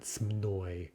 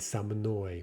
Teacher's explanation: these pronoun forms for yah that begin with an mn cluster that mn cluster is almost always broken up in russian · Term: mobile vowel